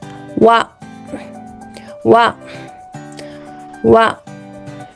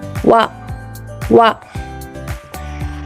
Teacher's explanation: So, this W is different from the English. Relax your lip and don't round your lip too much.